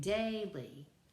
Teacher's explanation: We have trochaic, daily. So the first syllable is accented and the second one is not